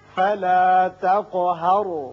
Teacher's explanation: قوف پر صفت قلقلہ ادا ہوگی. را ساکن ہے، پہلے زبر ہے، را پر ہوگا.